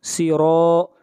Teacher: آگے بڑھیے، آیت نمبر 13، وَجَعَلْنَا سِرَاجًا، سِرَا، را کو موٹا پڑھیں گے، را کے اوپر زبر ہے